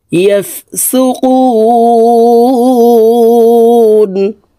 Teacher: কু 3 আলিফ টেনে নুনকে সাকিন করতে হবে, কারণ মদের হরফের বামের হরফে ওয়াকফ হইলে মদ্দা আরজি 3 আলিফ টেনিয়া পড়িতে হয়।